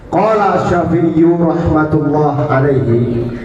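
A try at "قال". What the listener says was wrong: Jangan bentak-bentak gitu, santai aja. Kaget itu. Qala, santai aja.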